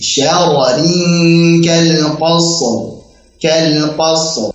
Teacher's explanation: Jadi syara, ranya yang pertama tebal, ri tipis.